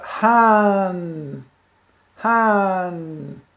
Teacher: Esse H depois do A, ele tem sempre essa particularidade de puxar o som da vogal anterior. No início ele tem o som de Ha, e entre vogais ele tem a particularidade de puxar o som da vogal anterior, torna longo.